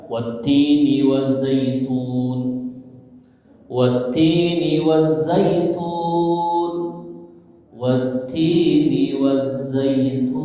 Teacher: Tapi ketika diwakafkan dimatikan maka berlaku hukum mat'arid disukuni, panjangnya boleh 2, 4 atau 6